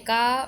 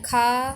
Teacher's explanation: अल्प प्राण में कंठ में का, महाप्राण में खा